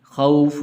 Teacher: خوف واو حروف لین میں سے، اس لیے لمبا نہیں کریں گے ، اور یہاں پر غنہ بھی نہیں کریں گے اس لیے